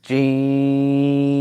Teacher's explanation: তবে আমাদেরকে আপাতত জেনে রাখতে হবে যে জিমটা তিন আলিফ আমরা যখন উচ্চারণ করব জিম তখন তিন আলিফ টান দিয়ে উচ্চারণ করব